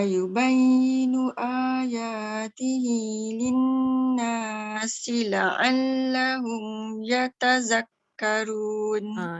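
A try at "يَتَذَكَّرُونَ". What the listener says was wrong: Yatazakkarun pun hujung lidah pun keluarkan. Yatazakkarun. Zal. Yatazakkarun. Hujung lidah. Dia punya bunyi memang lain. Kalau kita tak keluarkan hujung lidah, dia jadi zai kan. Dia ada berdesir.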